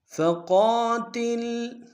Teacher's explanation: فقا میں قاف کو موٹا ادا کریں گے، قاف کے ساتھ الف مدہ ایک ہندار میں کھینچیں گے